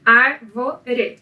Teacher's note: Então, contando da direita para a esquerda, a sílaba tônica de árvore é a antepenúltima, o que faz dela uma palavra proparoxítona.